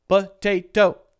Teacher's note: has or this word has how many syllables potato three syllables it is a three syllable word and the second one is stressed the second syllable T is stressed the first one is totally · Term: stressed syllable